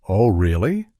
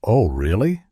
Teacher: with a high surprise tone they're genuinely interested or shocked but if they say oh really with a flat tone they might be skeptical or even a bit sarcastic